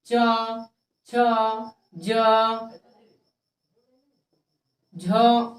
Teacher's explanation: जिसका उच्चारण तालु से होता है। तालु, तालु कहने का मतलब आप ये देख रहे हैं, जीभ जो होता है, जीभ के नीचे वाले भाग को तालु कहते हैं और जीभ के ऊपर जो भाग है उसे हम मुद्रा कहते हैं। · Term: तालव्य वर्ण